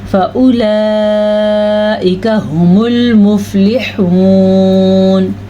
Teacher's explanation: ये मद की मिकदार जो है ये 5 से 6 हरकत अरबिया के बराबर है, यानी कि 5 से 6 सेकंड तक इस मद को लंबा करना है।